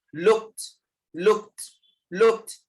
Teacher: Ending with k sound with ed. Sound will be t.